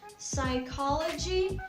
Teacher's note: even though it has the letter P in it, but it's absolutely silent. You don't need to say psychology, as it kind of sounds like the Russian word.